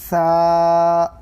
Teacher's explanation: زبان کی نوک کو سامنے کے دو دانتوں کے لگانے سے ثا ادا ہوتا ہے